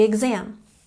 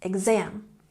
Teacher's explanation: emphasize the second syllable